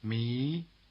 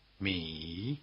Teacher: contrasts the rising tone surname me, with the low tone surname me